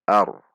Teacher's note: Ar dengan menegangkan pangkal lidah saat membaca ra, tidak dibaca ar.